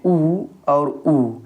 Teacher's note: जब हम इनको बोलते हैं तो हमारे ओठ वृत के आकार के हो जाते हैं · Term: वृत मुखी स्वर